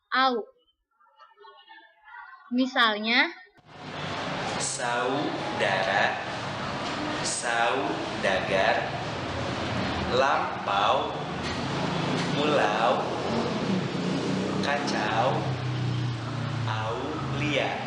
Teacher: Diftong naik menutup mundur. Au.